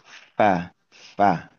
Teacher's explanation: huruf fa itu kan huruf bibir ya. Gigi seri menyentuh bibir bawah.